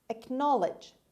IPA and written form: əkˈnɑːlɪdʒ (acknowledge)